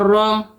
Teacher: را کے اوپر جب زبر ہوتی ہے تو اس کو ہم موٹا کر کے پڑھتے ہیں